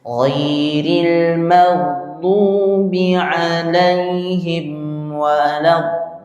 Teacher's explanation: Nah, jadi bacanya dengan enam enam harakat. Memang ini panjangnya seperti itu.